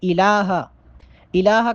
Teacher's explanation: لا الہ الا، لا یہاں پر مد ہے، یہاں پر مد کریں گے۔ الہ، الہ کا جو لام ہے اس پہ چونکہ کھڑا زبر ہے، اس کو ایک الف کے برابر لمبا کر کے پڑھیں گے۔